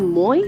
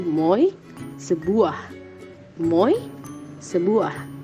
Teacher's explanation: Dan diftong menaik atau rising diphthong adalah diftong yang ketika perangkapan bunyi vokoid itu diucapkan, vokoid pertama kurang atau menurun sonoritasnya, bahkan mengarah ke bunyi non-vokoid, sedangkan vokoid kedua menguat sonoritasnya